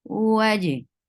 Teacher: For wow, circle your lips. For fatha, open your jaws, attached with jim. Jim will get qalqala.